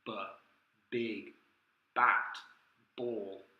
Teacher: But the mouth has to open. Lips meet, it's a bilabial sound, but then the air has to be released. Also notice there's no real aspiration. · We put their fingers to their throat, they'll notice it's a voiced sound. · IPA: /b/